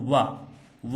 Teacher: वा का उच्चारण दांत और होठों के सहयोग से किया जा रहा है, इसीलिए हम इसे दंतोष्ठ कहते हैं।